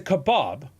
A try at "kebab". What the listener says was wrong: There's no O in that word.